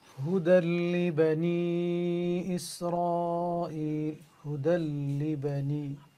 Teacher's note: There is إدغام without ghunnah, because after the tanween on the dal, there's a shadda on the lam, which means you connect it, but without ghunnah.